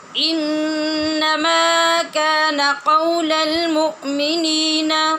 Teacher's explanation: ابھی آپ نے دو لفظ ساتھ ملائے ہیں تو ماں کی آواز ابھی سے کم ہو گئی ہے